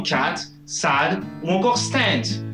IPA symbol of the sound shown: æ